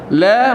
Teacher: La mana kita letak hujung lidah di belakang gusi. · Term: huruf lam